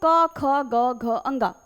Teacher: क वर्ग का उच्चारण स्थान बेटा कंठ होता है।